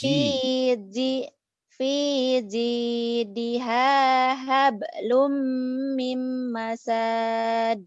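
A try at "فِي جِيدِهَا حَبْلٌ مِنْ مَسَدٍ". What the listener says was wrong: Pendek. Salah. Salah total. Mim masad. Pendek kenapa jadi panjang? Fi. Ji. Jiji. Jajiju. Jinya keras. Fiji. Salah. Salah. Kenapa jadi panjang? Ini idgham biguna di sini mimnya ditahan.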